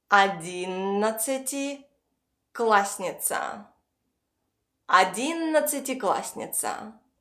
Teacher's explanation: instead of a double s, we pronounce a single s. Because when you speak fast, you don't have time to pronounce clearly every single letter.